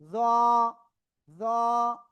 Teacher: জিহ্বার আগা উপরে দুই দাঁতের আগায় লাগিয়ে একটু মোটা আওয়াজে জ। জ, এক আলিফ টান হবে।